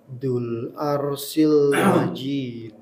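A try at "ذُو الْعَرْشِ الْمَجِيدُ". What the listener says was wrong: Dzul arshi. Arshi. Shin ya.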